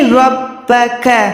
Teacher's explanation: را جو ہے موٹی ہے، با کے ساتھ ملی ہوئی ہے